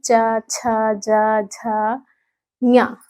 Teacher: तालू का स्पर्श हो रहा है ना तो यह हमारा तालव्य यानी तालू से उच्चारित होने वाले स्पर्शी व्यंजन है